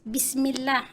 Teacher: Awalan di lafaz Bismillah itu ada huruf mim yang berbaris kasrah bertemu dengan lafzul jalalah itu harus dibaca tipis. Bismillah, laisa tarki tafkhim, tidak tebal.